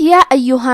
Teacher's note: اس مد میں ہم اپنی آواز 2 سے 4 مد کے برابر لمبی کریں گے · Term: مد جائز منفصل